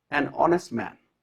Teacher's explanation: लेकिन हमने साउंड देखना है, एच को नहीं देखना. यहां पे एच साइलेंट है, इसीलिए हम एन का इस्तेमाल करेंगे